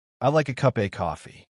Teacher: of becomes just a small sound almost like uh so learners think, "Wait, did I miss something?" But no, it's just reduced.